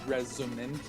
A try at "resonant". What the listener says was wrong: I think I heard a D when you said that.